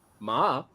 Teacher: when I did the falling Rising Ma that's horse